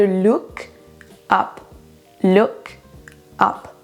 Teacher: On va pas détacher ça, ces deux mots de cette façon quand on l'utilise dans une phrase, mais on va lier look up, comme si c'était un seul mot.